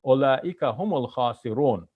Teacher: I dropped the A at the end, the last short vowel at the end when I'm stopping